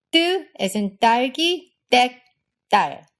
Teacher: It's totally unaspirated, and again, the tension in your throat will make the vowel afterwards be a bit higher pitched. So it's not just 땡, it's 땡. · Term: tense T